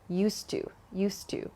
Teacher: also please consider the pronunciation here so not used to but native speakers connect the D and the T sound at the end of used and to · native speakers connect the D and the T sound at the end of used and to. So it's not used to, but used to, used to. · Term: dropping the D